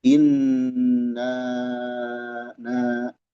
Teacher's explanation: Kemudian setelah gunah langsung ee berada di dekatnya mad munfasil na ya. Panjangnya empat atau lima harakat.